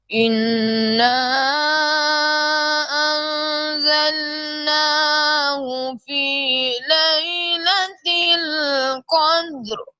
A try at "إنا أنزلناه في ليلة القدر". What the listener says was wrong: یہ دیکھو بیٹا، ایک تو ان یہاں پہ غنہ کرنا ہے اننا، اور ان کے اوپر بھی، اور زا کو آپ نے سخت اس میں صفت سفیر